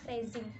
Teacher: dibentuk dengan cara pembentukan es tetapi dengan pita suara yang bergetar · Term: fricative alveolar bersuara